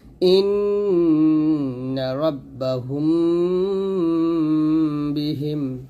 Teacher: হুম গুণ হবে, ইন্না ওয়াজিব গুণ করবেন।